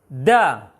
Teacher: Pengucapan dal dari mulai tasdid sampai terucap harokatnya tidak boleh ada aliran nafas. Karena ada sifatnya nanti untuk dal itu sifatnya adalah syiddah namanya.